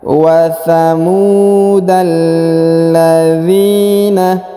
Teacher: Huruf da langsung ke alif lam qamariyah ya, ditahan dan ditekan.